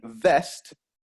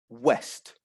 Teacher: it's the teeth coming into contact with the lips